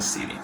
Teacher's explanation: los sonidos de la D y la T como cortan con la fluidez del idioma, se cambia por un sonido de una R